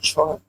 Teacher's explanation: तालव्य महाप्राण घोष वर्ण का उदाहरण